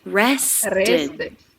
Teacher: Stress on the middle syllable.